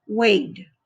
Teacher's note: Now, if you see the word, the v sound, v has a vibration sound, so it's voiced. So the ed makes the d sound, and the word is waved.